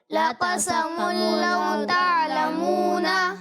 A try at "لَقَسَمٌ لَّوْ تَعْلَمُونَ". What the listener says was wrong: اچھا یہ ناک میں آواز نہیں لے جانی، ٹھیک ہے؟